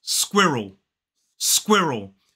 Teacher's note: two syllables the stress falls on the first syllable